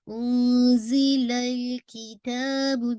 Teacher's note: لام پہ آپ نے باؤنس نہیں کرنا. انزل الکتاب ذرا سا ٹائم دیں گے تو باؤنسنگ افیکٹ نکل جائے گا.